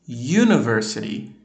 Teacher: o U em university é considerado som de consoante porque vem o som do Y